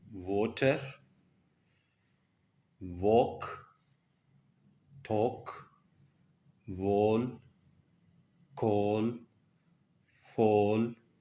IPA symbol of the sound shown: ɔː